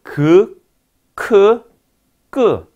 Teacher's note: 혀몸이 자, 연구개부에 닿거나 접근해서 조음되는 소리를 우리는 연구개음이라 하더라